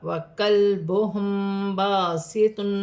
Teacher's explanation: لام ساکن ہے، لام ساکن کو کاف کی حرکت کے ساتھ ملا کر پڑھا جائے گا. میم ساکن کے بعد با رہی ہے تو یہاں اخفا مال غنہ ہوگا، چھپا ہوا غنہ کیا جائے گا